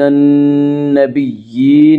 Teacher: نون مشدد غنہ ہوگا، غنہ کی مقدار 1 الف ہے۔